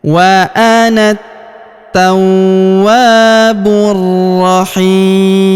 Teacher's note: alif lamnya tidak dibaca karena huruf bu langsung lompat masuk ke huruf ro yang berharokat tasydid, kita tahan dan tekan pada huruf ro ini ya.